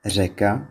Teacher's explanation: And the stress is usually on the first syllable of a word. Czech's most distinctive consonant is the raised alveolar non-sonorant trill, like in the word řeka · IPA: [r̝]